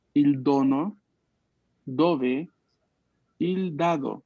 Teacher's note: la D también es fuerte, ¿no? No es la D que pronunciamos en español, que es un poco más suave